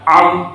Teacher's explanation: اور عین جو ہے انعمتا میں جو تیسرا حرف ہے عین، یہ نکلتا ہے درمیان حلق سے